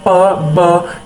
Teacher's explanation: Bilabial sound जो होती है जब हम दोनों होंठों को आपस में मिलाते हैं, दोनों होंठ जो होते हैं आपस में मिलते हैं तो वो बाइलेबियल साउंड प्रोड्यूस करते हैं, जैसे प ब, यानी कि इनमें दोनों होंठ जो हैं आपस में मिले हैं, तो वो होगी बाइलेबियल जेस्टर।